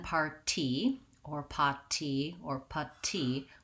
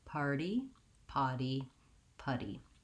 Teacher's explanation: i'm not really saying a strong d not par d but i lift up my tongue to that d position and my voice is on it's just a light touch up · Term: flap